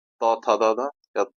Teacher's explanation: त वर्ग त थ द ध दंत वाला है